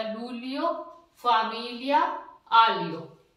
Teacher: जीएल के बाद में ई आ गया तो उसका उच्चारण ले बन जाता है। ये एक वोवल्स है ई के, ये आ गया तो इसका उच्चारण ले बन जाएगा, लूलियो, फामिलिया, आलियो।